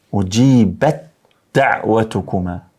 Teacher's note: Do thonë këtu po shkrihet e para në të dytën, prandaj idgham. Po hyn germa e parë në të dytën.